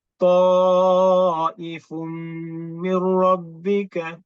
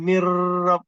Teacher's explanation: Dengung lama tak boleh. Dia touch and go.